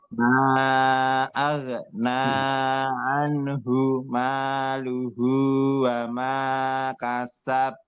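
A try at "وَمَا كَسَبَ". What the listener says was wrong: Kasaba. Wa ma kasaba. Itu tidak lagi ditahan kasab, bukan. Kasaba langsung.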